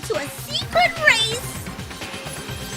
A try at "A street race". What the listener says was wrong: A street race, not secret race.